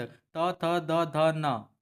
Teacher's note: त, थ, द, ध, न, ठीक है, इनका उच्चारण स्थान क्या है दोस्तों? तो इनका उच्चारण स्थान होता है दंत। दांत को टच करता है, बोल के देखिए।